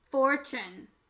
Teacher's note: you'll notice that the T changed to a ch sound, and this changed from an u to an sound.